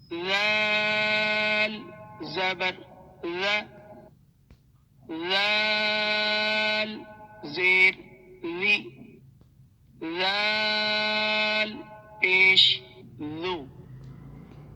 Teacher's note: اب یہ ذال جو ہے اسے سافٹ پڑھنا ہے، زبان کو باہر ہلکا سا کریں اور پھر ادا کریں